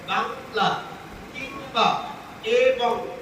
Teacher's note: যখন অনুস্বারের উচ্চারণ করবো তখন একটু নাসিক্য থাকবে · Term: নাসিক্য ভাব